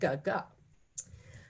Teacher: So for example, the G sound is produced by touching, the back of the tongue to the soft palate